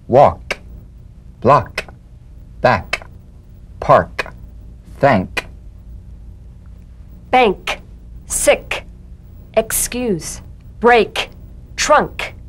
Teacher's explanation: the unvoiced tongue back plosive consonant with the tongue in the G position let the tongue spring away in the soft unvoiced click of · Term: K drum beat